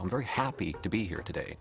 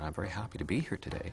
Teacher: canadians tend to end each sentence by moving their tone of voice slightly upward · a Canadian has a very gentle drifting up pattern